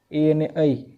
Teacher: રૂ એ મૂર્ધન્ય। એ અને ઐ કંઠ અને તાળવા બંનેમાંથી આવે છે એટલે કંઠ તાલવ્ય